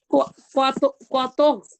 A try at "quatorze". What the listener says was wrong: না কোয়া না এটা কিউ এর পরে ইউ থাকলে ওটা সাইলেন্ট থাকে বলছিলাম তাই না তাহলে